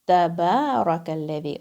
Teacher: Taba, ba, 2 counts. Ba is going to be 2 counts. So you're going to make it a little longer.